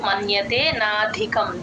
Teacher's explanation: మమ్ ఇప్పుడు మన్యతేనాధికం తతః మన్యతే నా కింద య వత్తు మన్యతే నాధికం ధికి మహాప్రాణం ఉంది గమనించండి